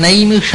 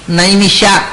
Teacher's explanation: ಯರಲವ ಶ, ಮೂರ್ಧನ್ಯ ಶ ಅಲ್ಲ, ತಾಲವ್ಯ ಶ